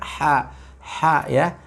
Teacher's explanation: ha dari tengah tenggorokan